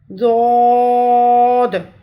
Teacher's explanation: ضاد کی آواز جو ہے یہ مکمل طور پہ پر موٹی اور درازی والی ہوتی ہے۔